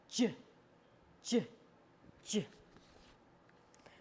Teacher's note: this is both a stop and a fricative so the sound stops and then it kind of bursts open in a noisy way so you put your tongue on the alveolar Ridge there behind